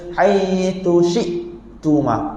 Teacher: Hamzah ni bukan macam ain. Dia tak boleh bunyi hidup. Dia mesti putus betul-betul.